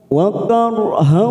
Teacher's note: ro sukun yang didahuli fathah kita baca tafkim